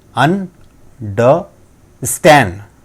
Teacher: वही चीज़ें हम यहाँ पे देख रहे हैं, this is our primary stress on stand, मतलब जब हम बोलेंगे तो स्टैंड हम ज़्यादा तेज आवाज़ में बोलेंगे